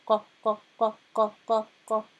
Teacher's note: It's at the back, at the top of the throat. And you say qa, qa, and you should be able to hear an echo in the room if you say it correctly. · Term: qaf